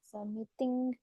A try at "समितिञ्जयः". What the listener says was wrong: Okay, I N, जी नहीं आएगा इसमें, आई एन।